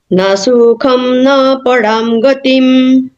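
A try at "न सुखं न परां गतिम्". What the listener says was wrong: हाँ, न सुखम, न सुखम नहीं, न सुखम न पराम गतिम, कम रुकना है, न सुखम न पराम गतिम।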